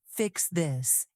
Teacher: Leaders do the opposite. They drop their voice slightly at the end. It sounds like the sentence is firm and finished. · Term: lowered ending